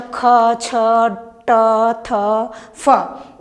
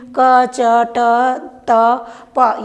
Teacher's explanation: तो अल्प प्राण और महाप्राण के अंतर का हुई, जेमा हमर प्राणवायु हमर श्वास के वायु कम उपयोग होते ओला अल्प प्राण कहे जाते, और जेमा हमार श्वास के वायु अधिक उपयोग होते ओला महाप्राण ध्वनि कहे जाते